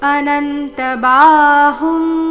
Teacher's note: ಈ ಶಬ್ದದಲ್ಲಿ ಬಾ ಮಾತ್ರ ದೀರ್ಘ